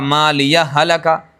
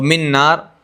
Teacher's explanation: ما لیہ ہلکا، گنہ نہیں ہو رہا. اور من نار گنہ ہو رہا ہے